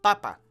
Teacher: The accent falls on that first a, right?